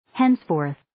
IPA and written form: 'hens'foʊrθ (Henceforth)